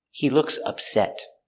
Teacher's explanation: upset is an adjective with the stress on the second syllable